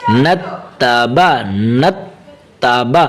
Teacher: نون کی فتحہ کو آگے تا کے ساتھ ملائیں گے